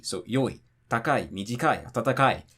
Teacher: And all the ones that are not heibon drop after the second to last syllable. So that means that if it's 2 syllables, it's going to be a tamadaka.